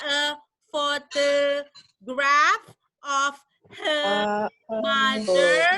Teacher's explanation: karena dia British R-nya hilang